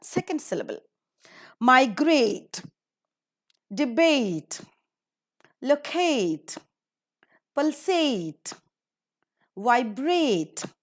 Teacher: all these words are ending with a t e and they're accordingly given the stress in the second syllable